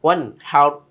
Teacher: নুন সাকিনের পর হা এসেছে, কোনো গুন্নাহ নেই।